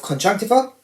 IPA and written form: ˌkɒndʒʌŋkˈtaɪvə (conjunctiva)